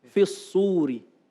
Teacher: Bukan fi al suri, tapi fis suri. Langsung dimasukkan.